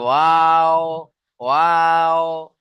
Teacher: দেখেন ওয়াও কোত্থেকে উচ্চারণ হয়, এর আগে আমরা পড়েছিলাম দুই ঠোঁটের মাঝখান থেকে, দুই ঠোঁট না মিলে মাঝখান থেকে উচ্চারণ হয়